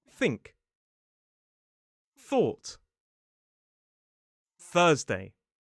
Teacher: It's like that. It's like a leaking of air through the top teeth. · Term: voiceless th